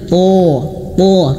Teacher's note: huruf tho dia tebal th th pangkal lidah naikkan lebih naik lagi